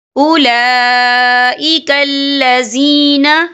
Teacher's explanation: فَلَن تَمْلِكَ لَهُ مِنَ اللَّهِ شَيْئًا أُولَئِكَ الَّذِينَ، یہ دیکھیں اولا لام کے پر کھڑی حرکات ہے اور اس پر مد بھی ہے، یہ مد جو ہے مد متصل ہے، اس کی مقدار 4 حرکت کے برابر ہے، تو ہم اسے 4 حرکت کے برابر کھینچ کے پڑھیں گے